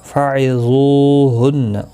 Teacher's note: فعظوہن، وا حروف مستعلیہ ہے، پر پڑھنا ہے. زو واو مدہ بھی ہے، ایک الف کی مقدار کے برابر کھینچ کر پڑھیں گے. نون مشدد پر غنہ ہوگا.